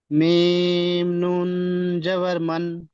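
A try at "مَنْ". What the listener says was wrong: নুনটা গুন্না হয়ে যাচ্ছে, মানে নুন উচ্চারণ করার সময় শুধু নুন। ঠিক আছে ভাই, নুন নয়, নুন।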